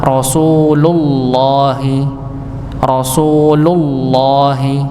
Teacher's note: dibaca tebal karena sebelum lafaz Allah itu fathah atau dammah tanda bacanya atau harakatnya